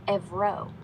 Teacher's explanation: >> In Greek, euro is spelled evro and pronounced like e v r o with the stress on the second syllable. The e v like in bed and a soft rolled R